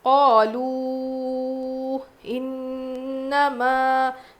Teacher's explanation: نون پہ تشدید غنہ کریں گے، میم الف زبر ما، الف مدہ تھوڑا کھینچ کر پڑھیں گے